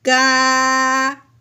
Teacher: کاف کے اوپر کھڑی زبر ہے، اس کو ایک الف کے برابر لمبا کریں گے